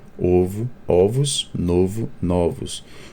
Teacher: o plural é marcado pelo s e pela mudança na vogal que é conhecida como metafonia